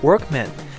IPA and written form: ˋwɝkmən (workman)